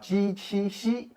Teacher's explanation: Relatively special ones are ji, qi, xi, which are palatal sounds